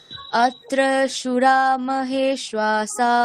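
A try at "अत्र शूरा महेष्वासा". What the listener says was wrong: সুরা দীর্ঘ সুরা ওখানে তালব্যস্য কি আছে? দীর্ঘ আছে, ওটা দীর্ঘ উ আছে, তাহলে আপনি ওটা হ্রস্ব উচ্চারণ করলেন। কিরকম হবে? অত্র সুরা, দুটোকেই টানতে হবে।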